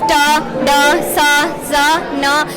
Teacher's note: and tongue touches our alveolar ridge. So sound are produced da, sa, za, na. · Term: alveolar sounds